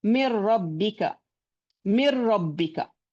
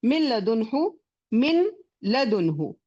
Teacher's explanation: although it is complete idgham, it is without gunna because the letters lam and ra do not have a gunna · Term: complete idgham without gunna